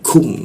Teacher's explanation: lidahnya diturunkan sehingga kunya itu ada hembusan udaranya. Kum seperti itu cara membacanya. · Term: huruf ku